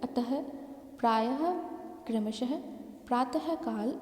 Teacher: विसर्ग का उच्चारण हल के रूप में ह ध्वनि के साथ होता है। इसमें वर्ण के आगे 2 बिंदु लगाए जाते हैं, जैसे अतः, प्रायः, क्रमशः, प्रातः काल आदि।